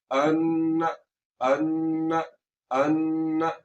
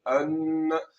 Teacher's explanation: अन्न, ये देखिए आवाज को नाक में ले जाकर थोड़ा सा लंबा किए, अन्न, अन्न, अन्न। ठीक है, आवाज नाक में गई, थोड़ी देर के लिए रुकी, आवाज को थोड़ा सा लंबा किया, फिर छोड़ दिया, अन्न। तो जहां पर भी नून आपको मुशद्दद नजर आए वहां पर आपने नून की आवाज को नाक में ले जाकर थोड़ा सा लंबा करना है। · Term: गुन्ना फरी